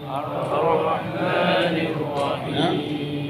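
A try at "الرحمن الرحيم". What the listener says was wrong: Ar-Rah. Bukan ar-Rah, bukan. Ar-Rahman. Rah, bukan roh. Karena ha nipis. Alhamdu kan nipis kan? Al-ha senyum. Jadi Ar-Rahmanir-Rahim.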